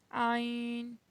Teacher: حلق کے درمیانی حصہ سے ادا ہوتا ہے عین